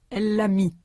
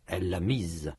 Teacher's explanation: Dans mi, le S n'est pas prononcé. Dans mise, il est prononcé comme Z, comme un Z.